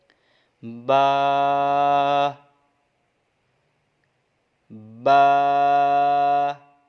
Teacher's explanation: با کا مخارج جو ہے آپ نوٹ کر لیں کہ با ہونٹوں کے تر حصے سے ادا ہوگا، جب دونوں ہونٹوں کے تر حصے آپس میں ملیں گے تو یہ با ادا ہوگا